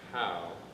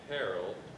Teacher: it starts with a slight breathy sound